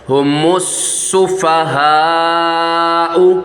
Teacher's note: میم کو سین کے ساتھ ملائیں گے، الف نہیں پڑھا جائے گا، لام بھی نہیں پڑھا جائے گا۔